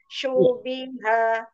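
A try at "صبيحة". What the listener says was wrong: Dengan shu. Nah, dhammahnya sempurnakan. Shu langsung. Jadi jangan shu. Nah, itu ada sofir. Sedangkan huruf shin itu hanya tafashi. Jadi jangan ada tambahan suara. Tapi mau langsung dhammah. Shubiha.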